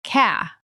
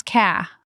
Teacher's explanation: car in the Southern drawl often sounds like ca. The R at the end softens significantly. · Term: southern R softening